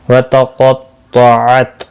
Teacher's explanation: قاف اور طا دونوں مستعلیہ ہیں، پر پڑے جائیں گے